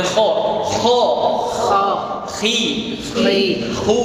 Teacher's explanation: Jangan anggap bahwa ghain dan kha ini di leher di lisan, tapi di tenggorokan.